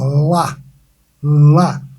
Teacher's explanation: O L é muito mais fácil de produzir do que o R. O L você simplesmente passa a língua no céu da boca e chicoteia.